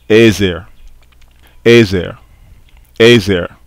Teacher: the consonantal value completely disappears